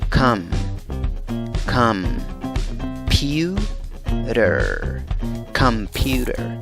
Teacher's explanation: no empiezas con la pronunciación de una O en la primera sílaba, sino dices come, come, pewter, computer.